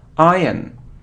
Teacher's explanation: So we don't hear r, no, iron.